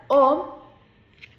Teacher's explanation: Para la vocal o la altura es altura media, la posición de la lengua es posterior y sí existe un redondamiento de labios al momento de pronunciar esta vocal.